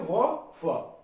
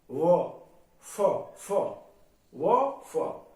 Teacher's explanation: ये होठ और ऊपरी दांतों के बीच से बोले जाते हैं